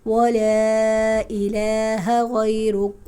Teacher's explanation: ولا پہ مد متصل نہیں ہے، مد منفصل ہے کیونکہ حروف مدہ کے بعد حمزہ دوسرے کلمے میں ہے